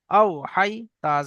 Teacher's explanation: হাই ইয়া জবর হাই, ইয়া সাকিনের ডান দিকে জবর এসছে, এটি হলো ইয়ালিন। ইয়ালিন নরম আওয়াজে তাড়াতাড়ি পড়তে হয়, টান দেওয়া নিষেধ। তা জবর তা, তায়ের উপরে জবর এসছে, জবরটি হলো হারাকাত, হারাকাতকে তাড়াতাড়ি পড়তে হয়, টান দেওয়া নিষেধ।